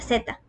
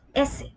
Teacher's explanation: Toquemos nuestra garganta mientras pronunciamos la Z. Sentimos esta vibración y luego S, sin vibración. Esto nos permite notar la diferencia entre sonidos sonoros y sordos.